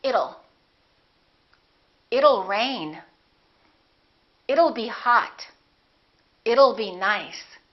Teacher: Let's change that T into a fast D and say it'll.